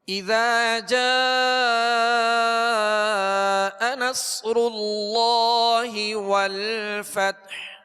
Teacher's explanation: اذا اب ذال کو ہم نے جو دراز کیا اس کے آگے الف ہے اور ایک الف کی مقدار اس کو کھینچ کر ادا کریں گے۔ جیم پر جو مد ہے یہ مد متصل کہلاتی ہے، اس کو مزید دراز کریں گے۔